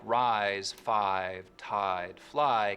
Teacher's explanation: words like rise, five, tide, fly keep their full I diphthong